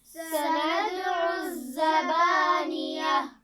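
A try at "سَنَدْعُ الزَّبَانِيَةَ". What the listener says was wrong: سندعو دال پر کیا کیا ہے اور سندع الزبانیہ تو یہ زا ہے سیٹی والی ہے اس کو نرمی سے نہیں پڑھنا سندع الزبانیہ اچھا با پر زبر ہے اس کے بعد الف ہے تو یہ کون سا الف ہے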